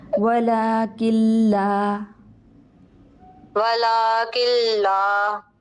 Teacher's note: نون کو مدغم کریں گے لام میں